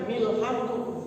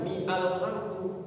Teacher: Di sini namanya hamzah wasol. Jadi hamzah wasol itu dia kalau wasol tidak bunyi hamzahnya.